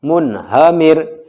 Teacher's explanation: را ساکن سے پہلے میم کے نیچے زیر ہے باریک